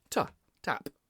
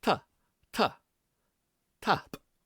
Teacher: we have an English T which comes off your palate, ta, tap. But in Gaelic we have a dental T which comes off our teeth, ta, ta, tap.